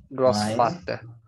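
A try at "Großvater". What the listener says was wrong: Opa. Grossvater. Perfeito.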